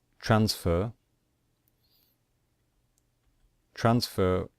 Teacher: we stress the first syllable so we do not stress the final syllable